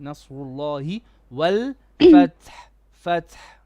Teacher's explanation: Nasru, sad is heavy, nun is flat.